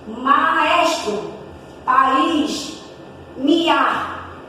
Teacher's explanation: encontros vocálicos que tem duas vogais juntas, mas elas se separam no som. Quando você lê, ela vai se separar. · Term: Hiato